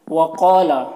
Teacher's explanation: قاف یہ حروف مستعلیہ میں سے ہے، اسے پر پڑھیں گے۔ یہاں پر الف مدہ ہے، اسے ایک الف کے برابر کھینچیں گے۔